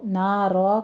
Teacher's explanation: اگر وقف مطلق ہے آپ وقف کرنا چاہیں تو نارا کہیں گے، یہ وقف ابدال ہو جائے گا، را پر پڑھی جائے گی۔